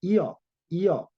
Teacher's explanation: 여라고 하는 것은 자 이가 앞에 있고 그 다음에 어가 붙는 거예요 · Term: 이중모음